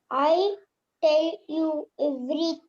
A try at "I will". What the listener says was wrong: apostrophe LL. You have to read it as I will.